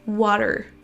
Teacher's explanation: Vous avez un son schwa suivi d'un R, mais pas un R à la française. On ne dit pas water, mais water.